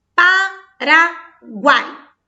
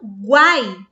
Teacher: Quando eu emito essa sílaba final, guai, eu pronuncio o U, o A e o I juntinho. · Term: tritongo